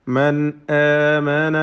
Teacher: മൻ സാക്കിന നൂൻ ഇൽഹാർ ഹൽഖി മണിക്കാതെ വെളിവാക്കുക.